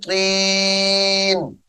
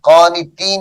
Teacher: میم مشدد کے ساتھ ملائیں گے فلا تکن من القانطین قانطین یہ قا ہے موٹی ہوگی یہاں پہ تا نہیں پڑھنی قانتین نہیں پڑھنا قانتین قال ومن يقنط سامعین محترم یہاں پہ